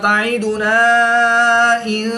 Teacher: الف مدہ کے بعد حمزہ دوسرے کلمے میں ہے تو یہاں پر مد منفصل ہوگی، 2 سے 3 الف تک کھینچ کر پڑھیں گے۔